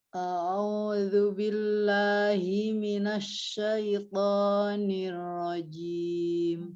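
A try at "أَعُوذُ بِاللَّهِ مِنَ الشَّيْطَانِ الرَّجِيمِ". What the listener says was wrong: Ya, Umi mau hamzah dijelaskan, ainnya dijelaskan. A'u gitu.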